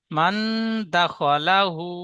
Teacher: লা বলে একটু টান দিয়েছেন লামটি টান হবে না